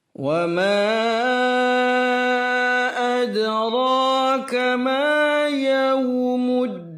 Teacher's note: muddin dikontrol suara i, jangan e. Muddin kurang tepat.